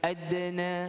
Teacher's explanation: kita masukkan ad dengan sughra, qalqalah yang ringan